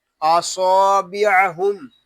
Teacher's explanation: صاد کو ہم پر پڑھیں گے اور صاد کو ایک الف تک کھینچ کر پڑھیں گے کیونکہ یہاں الف مدہ ہو رہا ہے.